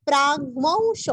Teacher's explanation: अधृतस धृति का ध्रु, तो के आगे विसर्ग का आधा स, अधृतस स्वधृतस स्वधृतस विसर्ग का आधा स, स्वास्यस स्वास्यस विसर्ग का स्वास्य विसर्ग का हल्का सा प, स्वास्य प्राग्वंशो प्राग्वंशो, प्राग आधा ग और व के ऊपर अनुस्वार का उच्चारण औ के जैसे करना है